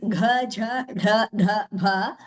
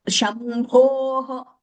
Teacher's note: these fourth letters of each Varga, they have something called a Ghosha effect, where the Nada comes from the chest, so to say, chest region.